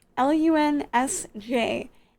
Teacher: And the SJ or the SKJ, a lot of those words are consonant groups. They just make the sh sound.